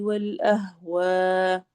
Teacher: اس کو والاہواء بھی پڑھ سکتے ہیں، حمزہ پہ ہلکا سا جھٹکا کرتے ہوئے، یا والاہوائی، دونوں طرح۔